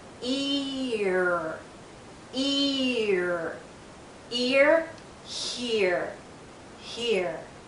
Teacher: it with these two symbols you can understand that we're joining we're putting together two vowel sounds e r the first one is longer and louder e and then we glide into ear ear ear here here